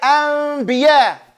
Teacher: The noon gets converted to meme. It turns into a meme. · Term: Iqlabun